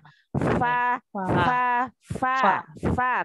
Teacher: Dan mau keluarkan huruf fa untuk hamasnya. Sifat aliran hamasnya ya.